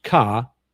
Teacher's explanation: There's ka, which is low tone.